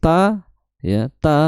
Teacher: ta makhrajnya adalah di ujung lidah bertemu dengan pangkal gigi seri atas